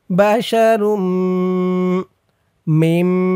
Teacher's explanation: তানবিনের পরে ঈদগামে বাগুন্নার চার হরফের এক হরফ মিম আসছে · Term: ঈদগামে বাগুন্নাহ